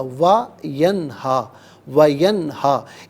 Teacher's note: نون ساکن پر غنہ نہیں کریں گے، یہاں پر اظہار ہوگا کیونکہ آگے حرف علقی ہا آ رہا ہے۔